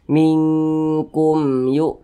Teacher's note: maka dibaca jelas jangan didengungkan baca pendek saja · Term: izhar syafawi